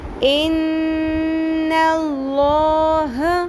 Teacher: نون کے اوپر غنہ کرنا ہے، نون کی آواز کو لمبا کرنا ہے اور لام کو پر پڑھنا ہے